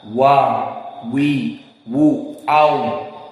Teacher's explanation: waw istidar antara bawah dengan atas sama, membuat lingkaran